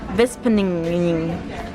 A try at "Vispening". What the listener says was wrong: I think it's Vispening. No, you said Vispeninging.